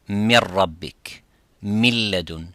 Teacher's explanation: So the noon becomes a silent. And the reason why the ra and the lam are closely, the makhraj close to the noon.